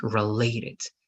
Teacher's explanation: related has the stress in the middle